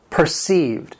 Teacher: It has two syllables and the stress is on that second syllable.